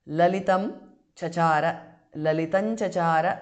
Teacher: because of sandhi anuswara changes to nu there